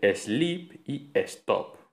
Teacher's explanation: También podemos escuchar el fenómeno en muchos anglicismos actuales como sleep o stop, que por aclimatación fonológica, que esto lo veremos después, pasan a pronunciarse sleep y stop, con esa E protética